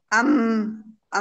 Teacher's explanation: अब मीम का मखरज क्या है? हर्फ मीम दोनों होठों को आहिस्ता से बंद करने पर अदा होता है। मीम की आवाज आगे खशूम, मतलब नाक में, नेशनल पैसेज में चली जाती है।